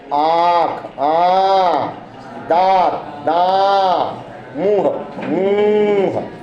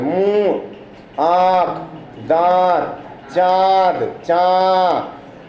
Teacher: वे वर्ण जिनके उच्चारण में हवा नाक और मुंह दोनों से बाहर आती है, उनको हम कहते हैं अनुनासिक, और उसके ऊपर अर्ध चंद्राकार बिंदी लगाते हैं, उसको हम कहते हैं अनुनासिक।